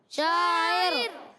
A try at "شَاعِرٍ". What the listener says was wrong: دیکھیں یہاں سے کسی نے پر کیا یہاں سے آواز آئی شاعر شاعر